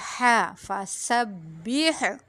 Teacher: اس کے اینڈ میں جو ہا ہے اس کو وسط حلق سے پڑھیں گے